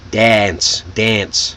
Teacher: So a British person would say dance, but Americans, it's that ah, that short A.